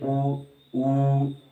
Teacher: उ और उ बोलते समय ओष्ठ यानी कि होठों का प्रयोग ज्यादा हो रहा है, होठों से आवाज ऐसी निकल रही है, होठों के मूवमेंट से आवाज निकल रही है, उ, तो होंठ उसमें हमारे हिले तो ओष्ठ हो गए, ओष्ठ कह दिया उनको।